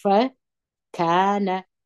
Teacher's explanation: څلور غاښه مو نه دي یا دا دوه د مخ غاښونه دا به د لاندې شونډې په لندې حصې ته داخل کړي هوا به پسې راپورې وي